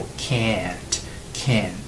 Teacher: できない方、母音▁a▁という長い母音になります